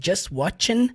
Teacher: o t ali do Just não vai sair firmemente vai ficar just watching everyday was like você percebe que não